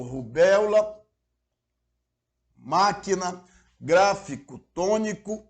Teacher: Aí já não depende mais da terminação, porque absolutamente todas deverão ser acentuadas pelo simples fato de serem proparoxítonas, ou seja, se a sua sílaba tônica, se a pronúncia mais intensa recai na antepenúltima sílaba das sílabas que compõem a palavra